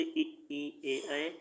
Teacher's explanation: अग्रस्वर जो आगे माउथ से बोले जाते हैं, जीभ की आगे भाग से